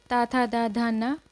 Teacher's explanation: इन सभी का उच्चारण स्थान क्या है? दंत है। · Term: ता वर्ग